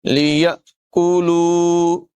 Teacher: حمزہ ساکنہ میں یہاں پر جھٹکا دیں گے، کاف کی آواز باریک ہوگی